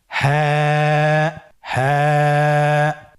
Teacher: হা হরফটি উচ্চারণের ক্ষেত্রে অবশ্যই বারিক হবে এবং এক আলিফ টেনে পড়তে হবে।